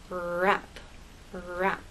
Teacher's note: your tongue never touches the bump it never touches any part of the roof of your mouth it comes close but it doesn't touch that's the biggest difference